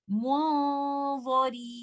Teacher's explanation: I should not give light ghunnah. I should make it a heavy and try to recite it like this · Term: ikhfa of noon sakinah